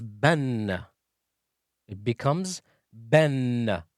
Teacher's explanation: Ba with fathatain, with double vowel, with two fathas, becomes ban. It becomes ben, as if there is an n next to it. All right? So it adds the sound of n.